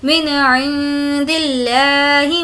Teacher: لفظ اللہ کو ہمیں یہاں پر باریک پڑھنا ہے کیونکہ لفظ اللہ سے پہلے زیر ہے